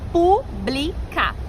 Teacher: Porque a antepenúltima sílaba é a tônica. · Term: proparoxítonas